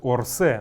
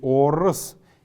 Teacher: Неясный гласный стоит между буквой Р и буквой С.